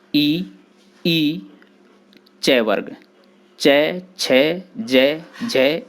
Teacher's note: तालु से बोले जाने वाले इन वर्णों को ताल्व कहा जाता है। इनके उच्चारण में जिह्वा मुख के ऊपरी चिकने भाग यानी तालु का स्पर्श करती है।